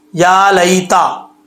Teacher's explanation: یا ساکن سے پہلے زبر آ جائے تو یا لین ہوتا ہے، لین کا مطلب اس کے اوپر مد نہیں ہوگی، اس کو لمبا نہیں کریں گے